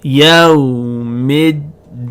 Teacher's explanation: the hemza is silent the lamb is silent and we skip straight from the meme to the dal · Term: Hamzat al-Waṣl